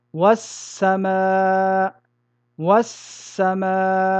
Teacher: il s'agit de fusionner le lam de al-tarif dans la lettre qui le suit, de telle sorte que les deux lettres ne deviennent plus qu'une seule et même lettre, du genre de la deuxième avec une shadda. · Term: idgham